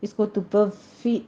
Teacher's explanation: फ़ा की साउंड नहीं लानी, मखरज एक ही है फ़ा मीम बा वाओ का, लेकिन वाओ के ऊपर तशदीद अदा करनी है।